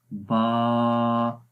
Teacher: तो अलिफ की आवाज़ जोफ़े दहन से आती है, यानी कि जोफ़े दहन मुंह के अंदर का ये जो खाली हिस्सा है यहाँ से जोफ़े दहन है, और ये अलिफ मद्दा का मखरज है।